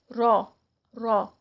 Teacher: یعنی تکرار ہر ہر کی ساؤنڈ یہ والی نہیں ہوگی. ایک دفعہ ذرا سی ٹرل ساؤنڈ آئے گی